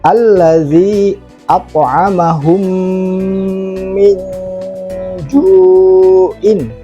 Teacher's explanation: Nah, di situ ada mim mati bertemu dengan huruf mim, maka bacaannya adalah dengung.